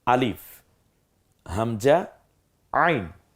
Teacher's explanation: আইনটা গলায় চাপ দিয়ে হামজাটা ছেড়ে দিয়ে।